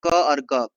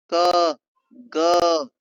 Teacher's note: जैसे कि क और ग कंठ में रुकावट क इसमें कंठ में रुकावट।